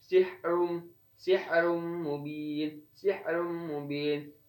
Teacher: Dan selanjutnya ada pada kata sihrum, sihrum mubin, sihrum mubin. Di sini ro-nya berharkat doma, maka hukum bacaannya yaitu tafkhim, dibaca tebal.